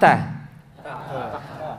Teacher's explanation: Ujung lisan disentuhkan dengan tempat tumbuhnya dua gigi seri bagian atas. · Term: huruf ta